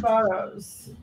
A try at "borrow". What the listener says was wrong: It's borrow, but. No, it's a common mistake because there's a lot of words people tend to put an S at the end of.